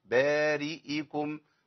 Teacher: أحقق الكسرة بتاعت الهمزة مع بيان الهمزة